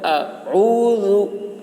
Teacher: اعوذ پڑھتے وقت اس بات کا خیال رکھنا ہے کہ پہلے اعوذ میں پہلے حمزہ ہے، پھر عین ہے، پھر ذال ہے، تو اس کو اس طریقے سے پڑھیں گے۔ اعوذ، عین کو حلق سے بولنا ہے، پھر ذال کی آواز باریک ہوگی۔ اعوذ باللہ، اللہ کے لام کو باریک پڑھیں گے۔